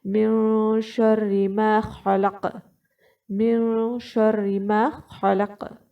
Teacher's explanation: خا کے وقت جو خلق ہے اس کا جو خا ہے، آپ نے حلق کے جو اوپر والا حصہ ہے وہاں سے آپ نے خا ادا کرنا ہوگا